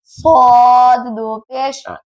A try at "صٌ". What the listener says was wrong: اور تھوڑا سا موٹا اور کریں